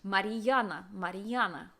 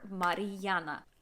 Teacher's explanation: it's just the r is pronounced a little bit longer